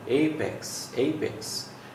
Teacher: Primary stress is put on a, this is diphthong here